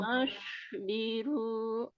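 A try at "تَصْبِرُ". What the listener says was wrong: Tadi, Bun, ditekan. Ujung lidahnya ditekan ke sini. Sudah hilang shinnya, sudah nggak pakai tengah lidah lagi. Tapi sekarang nanti belajar dinaikin lidahnya ya, Bu ya. Ya, naikin ya. Ini kan Ibu baru sini ya. Kalau tadi Ibu pakai tengah.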